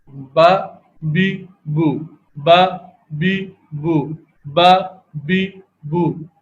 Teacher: مثال کے طور پر تو یہ دونوں ہونٹ ہیں، ان دونوں ہونٹ کا جو نسبتاً اندرونی حصہ ہے تو اس کے ملنے سے یہ حرف با کی ادائیگی ہو رہی ہے